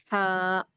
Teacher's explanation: اس کا مخرج ہے حلق کا درمیانی حصہ، یعنی کہ یہ حلق کے درمیانی حصے سے نکلتا۔